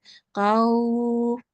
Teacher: But because it is not waw of elongation in this case, it is preceded by a fatha, it is a waw lean, and we will soften it for 2 seconds. Qaw, like that.